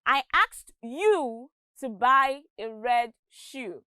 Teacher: You here is a structure word and it is stressed by the speaker to show that he asked you and no one else.